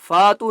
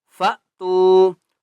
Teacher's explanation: فا حمزہ کے اوپر کیا ہے؟ جزم، اس لیے جھٹکا دیں گے